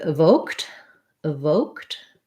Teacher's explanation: the e d and evoked says the t sound because um the k is voiceless so the e d just says t